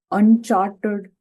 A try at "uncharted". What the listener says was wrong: you're seeing unchartered there's no R there it's Uncharted